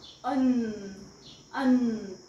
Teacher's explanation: अन अन म्हणजे दोन्ही लिप्स एकावर एक येत नाहीयेत